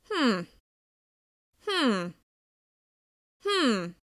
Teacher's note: The slight waviness in my intonation signals that I'm not committing, I'm leaving it up to the other person.